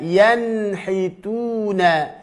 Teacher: Jangan seperti sakta dan juga tidak terpisah, dibaca sambung, kemudian jangan diqalqalahkan. Dan letakkanlah nun sukun tersebut, ujung lidahnya bertemu dengan gusi gigi seri atas, ya, bertemu dengan gusi gigi seri atas atau di atas mahrotnya ta, dal, dan ta. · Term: izhar